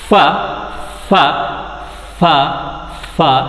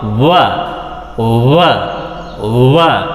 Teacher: ಅದು ಸೊ ಅಂದರೆ ಅದು ಅಲ್ಲಿ ಕೂಡ ಸಾಫ್ಟ್ ಪ್ಯಾಲೆಟ್ ರೈಸ್ಡ್. ಮತ್ತು ಡು ನಾಟ್ ವೈಬ್ರೇಟ್ ಫಾರ್ ಫ ಫ ಫ ಫ, ವೈಬ್ರೇಟ್ ಫಾರ್ ವ ವ ವ